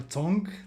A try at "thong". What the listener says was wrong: Thong. There's a TH at the beginning Thong.